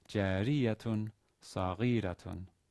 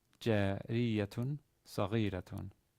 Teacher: the stress is on the third to last syllable in both words.